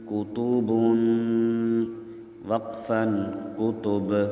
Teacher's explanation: یہاں با پر غنّہ بھی ہے اور با کے اوپر قلقلہ بھی ہے